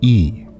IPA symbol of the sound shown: i